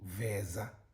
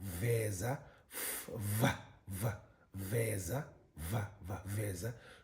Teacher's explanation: And then you have the slack voice, labiodental, fricative.